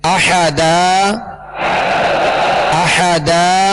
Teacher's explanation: 2 زبر کی تنوین کو الف سے بدل کر وقف کریں گے